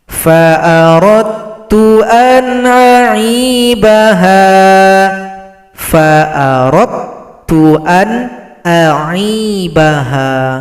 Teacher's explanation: Di sini ada lagi idgham mutajanisain. Dal tidak dibaca karena telah gabung pada huruf ta.